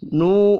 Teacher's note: واو مدہ ہے، 1 الف کے برابر کھینچ کر پڑھیں گے